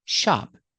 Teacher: Use a short ah sound like hot and stop.